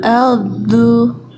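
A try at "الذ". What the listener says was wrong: Nah, itu masih putus. Aldu. Kenapa putus? Nah, jangan digigit ujung lidahnya. Jangan terlalu ditekan. Ngalir gini. Tuh ketika ujung lidah disentuhkan ke ujung gigi seri atas ngalir. Aldu. Jadi kayak zal.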